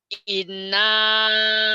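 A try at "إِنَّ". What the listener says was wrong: bukan ina. Iya betul, tapi bacanya salah. Ina, bukan. Kan ada tasdid. Dan ini gunnah. Inna. Kurang. Kurang banyak. Inna, tenang, tenang. Inna.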